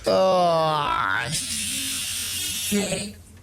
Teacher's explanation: Like he really enunciates that T at the end. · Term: T sound